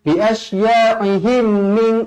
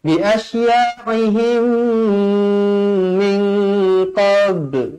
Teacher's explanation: Mim bertemu mim, hukum dia idgham mithlain saghir, dibaca dengung dua harakat. Mesti dengung, jangan baca jelas.